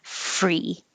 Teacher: i can make my tongue curl back for the r at the same time i'm making my f so while i'm saying inside my mouth my tongue is already